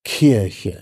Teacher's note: das K aspirieren da wird so ein kleines h hinzugefügt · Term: behaucht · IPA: [ˈkirçə]